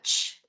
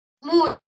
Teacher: ese sonido ch, palatal, perdió su modo de articulación de africada, ch, y pasó a ser una semivocal